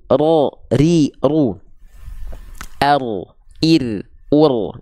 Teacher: dia itu bergetar tapi bukan dengan karakter Getaran yang berlebihan dia getarannya sedikit saja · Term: takrir